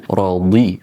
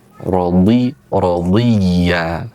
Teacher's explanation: Ah, itu kayak seperti dal, ya, tapi dibaca dengan radhi, menempelkan tepi lidah kita ke gigi geraham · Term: huruf dhad